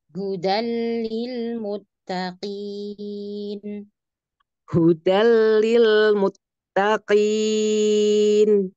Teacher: Huda lamnya ya tipiskan